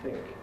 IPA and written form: θɪŋk (think)